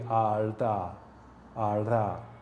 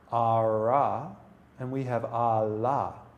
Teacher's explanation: In Japanese, there tends to be one sound, and it is a flap. And that sound, if I were to put it between two vowels, two A's, it would be arda, arda.